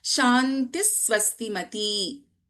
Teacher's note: Visarga, when followed by Sakaraha, we do not chant the complete Visarga